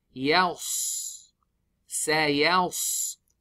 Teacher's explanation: we lift the tongue, the back side, back of the tongue up towards the roof of the mouth. But the ya will be thin, so be careful.